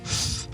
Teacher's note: When we pronounce /θ/, our vocal folds are not vibrating.